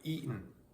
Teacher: eaten may be realized with a glottal stop like eaten, or a reduced second syllable